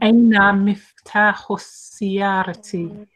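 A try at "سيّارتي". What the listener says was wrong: It still sounds like you're saying siyarati and not sayyarati.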